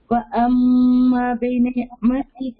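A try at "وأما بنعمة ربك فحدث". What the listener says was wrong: کھینچنا ہے نا، وہ ہے مدہ بھی، وہ حروف مدہ بھی ہے اور تشدید بھی ہے میم کے اوپر.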